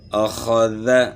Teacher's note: ادنی حلق سے، یعنی گلے کے شروع سے ادا کرنا ہے، اور خا یعنی موٹی ہوگی، اخذ۔ ذال جو ہے زبان کی نوک اور ثناء علیہ کے کنارے سے، اخذ، یعنی اتنی آواز ہم نے کھینچنی ہے، اس سے زیادہ نہیں کھینچنی ہے، تینوں کو برابر جو ہے نا، اخذ، یعنی زبر کو ہم نے کھینچنا نہیں، سجدہ، یہ تو زبر کے متعلق ہو گیا۔